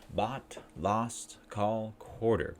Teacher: The sound is low back tense vowel. Lower your tongue, pull it backwards, make a circle with our lips. Circle. Tongue, tighten tongue, and breathe out.